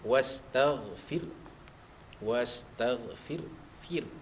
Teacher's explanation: Wastaghfir, fir, ra sukun tu dibaca nipis